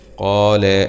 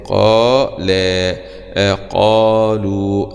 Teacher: زي قال، هنا المد الطبيعي جاء مرتين في الكلمة. قال هذا ألف سكون، مد طبيعي يمد بمقدار حركتين. قال قالوا، هكذا مد طبيعي برضو جاء مرتين بعد القاف وبعد حرف اللام.